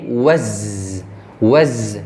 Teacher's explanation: Di zai ada sofir ya, ini seperti desis ya, seperti lebah, desis lebah. Zai sifat lin, lembut ya.